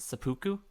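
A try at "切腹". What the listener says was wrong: seppuku. Yeah, you're pronouncing it too much like Sudoku.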